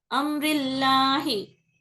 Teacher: नोके जुबान उसकी मखरज पे जाके लगती, बट जुबान की जड़ जो है उसको फ्लैट नीचे ही रखना, उठाना नहीं है। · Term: बारीक